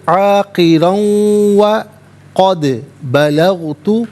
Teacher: عاقرا میں را پر 2 زبر کی تنوین پر کر کے پڑھا جائے گا، 2 زبر کی تنوین کو واو کے ساتھ ملا کر واو کی آواز کو ادا کیا جائے گا۔ یہاں پر یرملون کا قاعدہ اپلائی ہوگا، اس سے پڑھیں گے عاقرا وقد بلغت۔